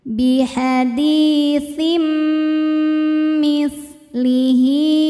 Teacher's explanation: Cara bacanya tanwinnya dileburkan ke mim kemudian dengungkan. Jadi bunyi m ya ini. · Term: idghamhunah, idgham bi gunnah